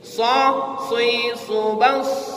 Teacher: Sifatnya yang paling menonjol itu adalah isti'la, terangkat pangkal lidah. Makanya berat mengucapkannya Bu.